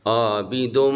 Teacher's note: حرف لمبا ہوا، آواز ناک میں گئی اور غنہ ہو گیا